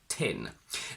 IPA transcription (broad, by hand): n